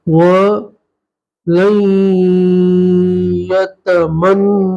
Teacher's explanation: لام کو سیدھا یا سے ملائیں گے، ٹھیک ہے، کیونکہ یہاں نون ساکن کا ادغام ہوگا تو نون ساکن کو نہیں پڑھیں گے، لام کو سیدھا اس والے یا سے ملا دیں گے.